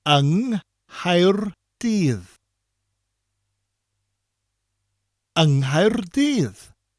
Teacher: When we use un in front of a word beginning with C, such as Caerdydd, the C gets replaced with NGH, which creates a ng sound.